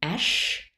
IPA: ʃ